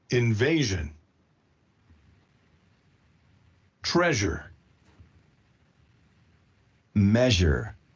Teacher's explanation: So in general, I think Spanish speakers, we tend to produce the sound j as sh. We tend not to produce the voiced sound j, but to produce the voiceless sh. because both of them are palatals, both of them are fricatives, right?